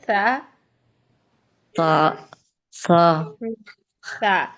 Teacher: सीन में सीटी होती है, सा में नहीं होनी चाहिए